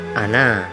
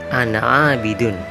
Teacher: dibaca panjang pada waktu berhenti atau dibaca pendek ketika disambung